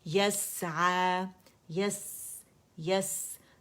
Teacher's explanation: سین میں ہمارے پاس رخاوہ بھی ہے، سیٹی کی آواز بھی باریک بھی ہے، ہمس بھی ہے